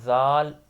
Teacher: जाल की भी नरम आवाज में अदायगी होगी। जैसे सा की होती है। जुबान की नोक ऊपर वाले दांतों या किनारों से टच होगी। और जा अदा करते वक्त नरमी नहीं होती।